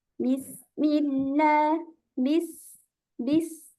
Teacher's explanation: ketika sukun suara safirnya lebih tajam